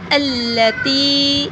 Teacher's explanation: تا کو تھوڑا سا لمبا کریں گے، زیر کے بعد یا آ رہی ہے